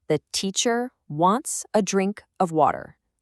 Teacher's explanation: Ba-dum, ba-dum, ba-dum, ba-dum. The pulse is on teacher, wants, drink, water. Those are the words that give you the main message.